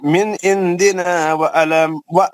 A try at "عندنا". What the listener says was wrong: عندنا. آپ کا اخوا جو ہے نا اس پر دھیان دیے تھوڑا سا. آپ کا اخوا جو ہے نا اس میں نون کی آواز آ رہی ہے. عندنا